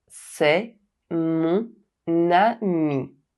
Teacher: However, if I use it in this phrase, there is a liaison between “mon” which ends with the silent consonant N and “ami” which starts with the vowel A. The consonant N is not silent anymore and it is pronounced with the vowel sound that follows.